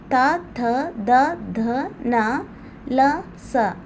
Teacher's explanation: ಇವು ದಂತಗಳ ಅಂದ್ರೆ ಹಲ್ಲುಗಳ ಸಹಾಯದಿಂದ ಹುಟ್ಟುವುದರಿಂದ ಇವನ್ನ ದಂತ್ಯಗಳೆಂದು ಕರೆಯುವರು